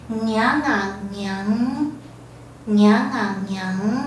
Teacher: 这个伢后加要造成一个嗯的韵尾，一个喉咙共振的韵尾。好，然后呢，另外它是一个伢是一个阴性的后加字，所以呢它会把声音拉长，然后声调变弱